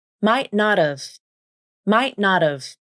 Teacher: And the T in not turns into the flap.